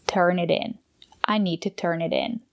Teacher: The letter T is between vowels. We pronounce it as a fast d.